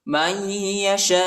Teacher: من الحق بإذنه والله يهدي من يشاء میم کو یا کے ساتھ ملائیں گے، ٹھیک ہے. یا پر شد آیا ہے اور غنہ بھی کریں گے، نون نہیں پڑھا چاہتا، نون ساکنہ ہے.